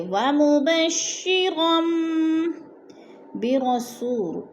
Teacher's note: من التوراۃ ومبشرا برسول یأتی، تورا، تو پہ جو ہے وہ لین ہے، وہ لین کو لمبا بھی نہیں کرنا اور جھٹکا بھی نہیں دینا۔ ومبشرا، 2 زبر تنوین آگے با آگے تو ادھر اقلاب ہو رہا ہے، 2 زبر کو میم میں بدل کر پڑھیں گے